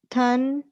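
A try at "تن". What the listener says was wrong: तन, थन नहीं है, हे नहीं है इसमें, सिर्फ तन, तन। सॉफ्ट साउंड, ते की साउंड सॉफ्ट टी से।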